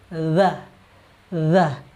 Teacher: Nah, kawan-kawan fokus di huruf dha, makhrajnya atau tempat keluar hurufnya yaitu ujung lidah dengan ujung gigi seri atas.